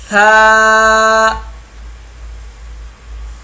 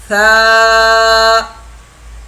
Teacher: ثا، زبان کی نوک جب اوپر کے اگلے دو دانتوں کی نوک کی طرف والے، زبان کی نوک اوپر کے دو دانتوں کی نوک کی طرف والے آدھے حصے سے لگے تو ثا ادا ہوگا۔